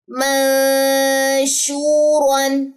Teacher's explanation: را کو موٹا رکھنا، شین میں تفشی آواز کو پھیلانا ہے.